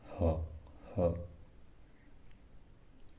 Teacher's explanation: काकल, देखिए काकल से इसका ये आपका गला को टच करिए, उच्चारण करिए। काकल थोड़ा कंपन होगा इसमें, ह ह। काकल अलिजीव, छोटी जीभ से बोली जाने वाली, जीभ के पिछले वाले हिस्से से, ह ह, इसलिए इसको काकल अलिजीव कहते हैं।